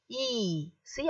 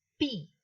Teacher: if i say e see i'm saying it with an open mouth but when i say p i'm shutting my lips